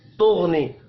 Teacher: गैन साकिन है, कलकला नहीं करना। गैन हुरूफ मुस्तअलिया है, पुर पढ़ेंगे।